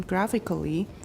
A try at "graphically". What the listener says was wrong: Graphically, don't pronounce the last A. And that's true for almost all ALLY adverbs. 那个 ALLY 的 A 就不要发音.